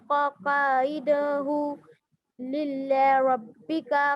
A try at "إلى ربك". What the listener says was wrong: इल्ला नहीं बेटा, देख के पढ़ें, इला रब्बिका